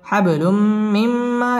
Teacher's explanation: তানবিনের বামে মিম আসছে মিম ইদগামে বা গুন্নার হরফ গুন্না সহ মিলিয়ে পড়তে হবে